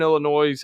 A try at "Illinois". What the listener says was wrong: Say Illinois. I know there's an S at the end of that. I get it. It's It's just Illinois.